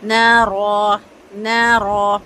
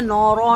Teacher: نون موٹا نہیں ہوگا، صرف رو موٹا ہوگا